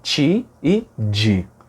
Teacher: Pense, por exemplo, no som de T e no som de D. que antes do som de I, em grande parte do Brasil, viram ti e di.